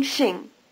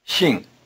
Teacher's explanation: Shing is pronounced with the tongue farther forward and with the lips spread